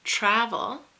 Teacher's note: which has the emphasis on the first syllable and the second syllable is weak